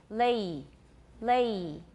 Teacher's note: we use this symbol I, but it's not really an I, and it's not quite an E. It's somewhere in between I and E.